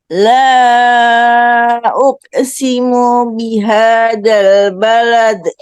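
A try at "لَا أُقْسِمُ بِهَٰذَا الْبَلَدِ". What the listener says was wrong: Mantulkan qalqalahnya, Bu. Uko. Uko begitu. Qalqalahnya yang pertama uko.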